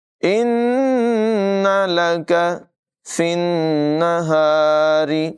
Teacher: نون مشدد میں غنہ کریں گے، را کی آواز باریک ہے